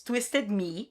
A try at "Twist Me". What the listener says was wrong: It's Twist Me, right? You said Twisted Me.